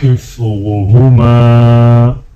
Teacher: میم کو ایک الف کے برابر کھینچ کے پڑھیں گے